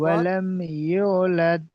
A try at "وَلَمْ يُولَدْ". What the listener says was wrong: ইউ টান হবে এখানে, ইউ ইয়া অমাদ্দা। ওয়া লাম ইউলাদ।